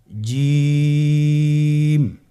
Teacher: জিহ্বার মধ্যখান তার বরাবর উপরের তালুর সঙ্গে লাগিয়ে উচ্চারিত হয় আপনারা পিকচারে ছবিতে দেখতে পাচ্ছেন যে জিহ্বার মধ্যখান তার বরাবরউপ উপরে তালির সঙ্গে লাগিয়ে উচ্চারণ করতে হয়।